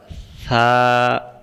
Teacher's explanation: সা অক্ষর জিহ্বার আগা থেকে নরম করে পড়তে হয়